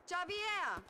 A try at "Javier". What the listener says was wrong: Javier. It's pronounced like an H. Javier.